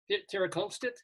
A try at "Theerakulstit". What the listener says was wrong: No, the K is pronounced like a G and the L is pronounced like an N. Thai names aren't pronounced the way they're transliterated.